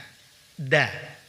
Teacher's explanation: berikutnya yaitu huruf dan huruf Dal dimana Ma'ruf dari huruf Dal dikeluarkan dengan cara menempelkan ujung lidah dari arah punggungnya pada pangkal dua gigi seri atas